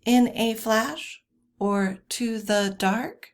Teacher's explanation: two unstressed syllables followed by a stressed syllable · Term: anapest